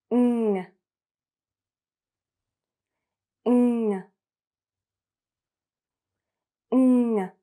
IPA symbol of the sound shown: ŋ